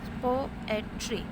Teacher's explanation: First syllable is stressed, second and third is unstressed. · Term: Dactyl meter